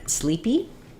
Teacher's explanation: sleepy is first syllable stress both vowels say the e sound